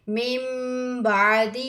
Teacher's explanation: یہاں پہ کیا ہے، نون ساکن کے بعد با آیا ہے، حروف اقلاب ہے۔ اقلاب کا مطلب ہے بدلنا، نون کو میم میں بدل کر پڑھیں گے